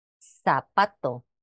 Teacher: En las de hablas del centro y norte de España representa el fonema interdental fricativo sordo, que es lo que conocemos como la Z, zapato. En las hablas del suroeste peninsular, en Canarias y en toda Hispanoamérica, representa el fonema predorsal fricativo sordo